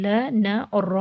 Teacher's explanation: और बच्चों, ये ज़ुबान की नोक को ऊपरी और निचले दांतों के किनारों से लगाएंगे तो ये हुरूफ अदा होंगे। अब बच्चों, ज़ुबान की नोक को तालु के इब्तिदाई हिस्से से लगाएंगे तो ल, न और रॉ अदा होगा। ल और न बारीक हर्फ है, जबकि रॉ मोटा हर्फ है।